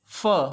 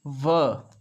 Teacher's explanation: f is voiceless, V is voiced